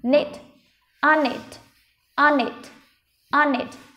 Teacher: Âm n nó sẽ nối với âm knit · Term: nối âm